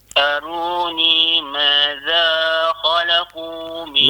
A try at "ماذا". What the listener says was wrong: Madza za tu dua harakat saja. Kalau kita panjang contoh madza itu dah lebih daripada dua. Dia dua ni dia senang madza. Sekali sebutan. Madza khalaqu. Itu dua. Madza.